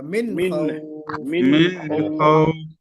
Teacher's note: मिन में गुन्ना बिल्कुल भी नहीं होगा